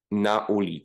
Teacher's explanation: the second word starts with a new attack um with a glottal stop